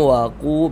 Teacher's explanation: qu dibaca panjang mad thobi'i panjangnya dua harakat